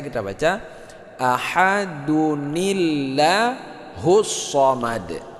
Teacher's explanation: Nah, ya, ada bunyi nun mati di situ. Itu nun mati tersebut kalau kita sambung maka jadi hidup walaupun tidak tertulis ya. Sehingga kita baca ahadunillah.